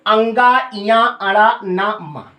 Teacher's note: नासिका के सहारे बोले जाते हैं, नासिका से नहीं बोले जाते, बोले तो मुंह से ही जाते हैं, नासिका का सहारा लिया जाता है, इसीलिए इनको नासिक के व्यंजन कहते हैं। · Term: नासिक्य व्यंजन